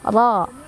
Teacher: Fa'idza farag, ro-nya dibaca secara tafkhim karena ro-nya berbaris fathah. Jadi cara bacanya ditebalkan.